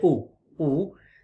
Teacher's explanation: your lips are rounded when you say oh ooh